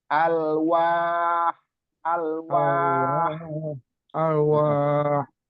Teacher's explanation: Ahnya kayak ha tipis ya.